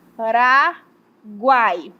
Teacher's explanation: Vamos para o próximo conceito que é tritongo. Aqui eu vou ter o encontro de uma semivogal, que é um som mais fraco, uma vogal que é o som mais forte e uma semivogal que é um som mais fraco.